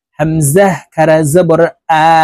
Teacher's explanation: দেখুন হামজাহ খারা জবর আ শক্ত করে হামজার উচ্চারণ করতে হবে হামজা খারা জবর আলিফ টেনে শক্তভাবে উচ্চারণ করব